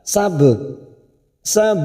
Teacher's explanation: ada huruf ba sukun qalqala sugro Karena Mati asli di tengah kalimat jangan lupa dipantulkan